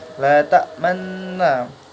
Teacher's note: ta'manna di sini adalah gharib ismam, di mana cara bacanya harus mencucu.